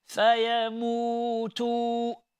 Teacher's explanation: You need to stretch, insha'Allah ta'ala. This is called mad al-asli.